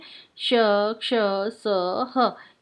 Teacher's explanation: मुंह में हवा के रगड़ खाने के कारण ऊष्मा यानी कि गर्मी सी पैदा होती है, इसलिए इन्हें ऊष्म व्यंजन कहते हैं।